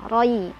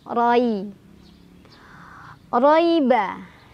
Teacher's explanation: Roi adalah harf lin karena ada ya sukun sebelumnya ada fathah. Jadi dibacanya dilunakan saja